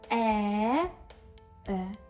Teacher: ось ці от нейтральні і ліниві звуки - це і є звук шваа. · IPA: ə